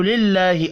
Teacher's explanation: اللہ کا نام زیر کی وجہ سے باریک پڑھا جائے گا